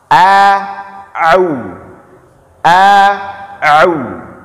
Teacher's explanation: Ain itu dikeluar di tengah tenggorokan, Pak.